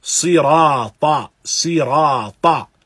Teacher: ra is recited mufakham, it is recited in this heavy manner, and it is not recited lightly